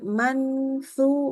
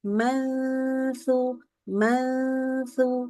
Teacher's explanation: lidahnya sudah di posisi huruf sa dan sudah kena ke gigi